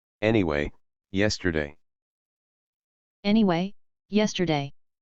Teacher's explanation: Por eso es que en este caso, como regla práctica, sí que podemos pronunciar igual ambos sonidos. Escuchemos dos palabras que contienen una E española y una E medio abierta para escuchar que son prácticamente iguales.